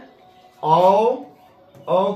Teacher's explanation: ये हो गया ए और है औ औ को कंठोष् वर्ण कहते हैं क्योंकि इनके उच्चारण में कंठ और ओष्ठ का उपयोग होता है। जैसे औ औ ओष्ठ भी सड़ता है और कंठ से भी इनकी ध्वनि निकलती है। इसीलिए अ और अ को कंठोस्ट वर्ण कहते हैं।